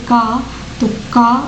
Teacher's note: जैसे आप बोलोगे का तो का बोल दिए, इसमें कोई का के बाद कोई हकार जैसे उच्चारण या ध्वनि नहीं निकलती। इसमें अल्प प्राण मतलब अल्प मतलब थोड़ा सा श्रम लगा के ही बोलना पड़ती है।